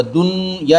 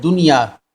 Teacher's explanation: اب نون کے بعد یہ ہے، اس لیے یہاں پہ غنہ نہیں ہوگا